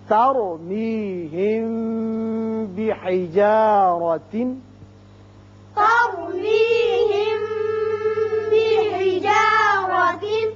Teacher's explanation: اب میم ساکن کے بعد با آ رہا ہے، یہ قاعدہ آپ پڑھ چکے ہیں کہ جب میم ساکن کے بعد با آ جائے تو اسے اخفائے شفوی کہتے ہیں، یہاں ایک الف کے برابر آواز ٹھہرتی ہے۔ بحجارہ را کے اوپر زبر ہے اس لیے اس کو پر پڑھیں گے